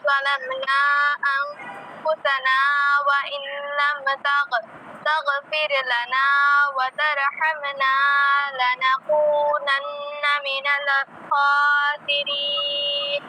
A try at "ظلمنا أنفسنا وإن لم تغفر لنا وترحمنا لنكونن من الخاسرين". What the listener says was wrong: হয়েছে কিন্তু ভুল আছে। গয়েন্ডে কলকলা করো কেন?